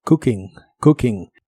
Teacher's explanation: Y usaremos el verbo cooking, que significa cocinando. La doble O de esta palabra se pronuncia como una U corta y explosiva.